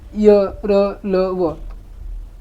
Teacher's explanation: ज्या व्यंजनांचा उच्चार करताना जिभेचा उच्चारक अवयवांशी पूर्ण स्पर्श होत नाही ते अंतस्थ व्यंजन होय